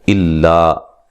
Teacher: हमज़ा को लाम से सख्ती से मिलाएंगे, अलिफ मद्दा है।